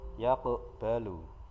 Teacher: Di tengah kalimat ini ada huruf qaf yang dibaca sukun. Nah, cara membacanya dipantulkan dengan ringan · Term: qalqalah sughra